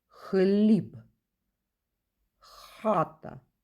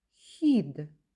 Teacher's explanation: звук х здебільшого вимовляється твердо хліб хата Іноді він вимовляється м'яко